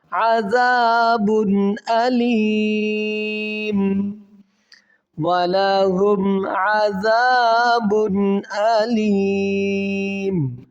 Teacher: یہاں پر غنہ کیوں نہیں ہوا؟ کیونکہ دو پیش کی تنوین کے بعد حرف حلقی میں حمزہ ہے، تو یہاں پر غنہ نہیں بلکہ اظہار کیا جائے گا